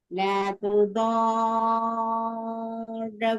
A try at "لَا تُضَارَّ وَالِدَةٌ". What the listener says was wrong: அந்த ரால நிக்கிறது போதாது. ல துதார் வாலித துதார் என்ன சப்தி இருக்குது? துதார துதார என்ன பேல ஒன்று ஷத்து, ரெண்டாவது ராவல்.